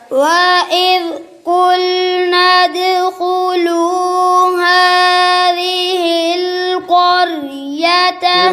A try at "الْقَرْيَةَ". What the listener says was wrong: را باری پڑھ دیا. قَرْيَةَ.